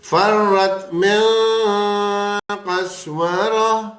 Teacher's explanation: گول والی تا بس کیسی بھی ہے، کوئی بھی حرکت ہے اس کو ہا ساکن سے بدلتے جا رہے ہیں ہم